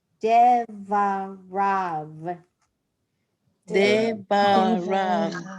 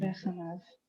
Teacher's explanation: when you have Kamatz Yod Vav at the end of a word, the Yod is silent. It's a special ending.